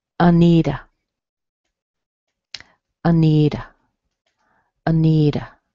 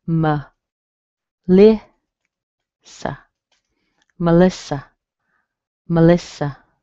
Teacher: you're going to hear a schwa in the beginning and a schwa at the end. In other words, you won't hear the vowel.